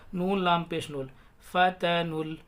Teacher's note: नून को या डायरेक्ट लाम में मिलाएंगे, ये अलिफ और ये वाव तीनों नहीं पढ़े जाएंगे, साइलेंट रहेंगे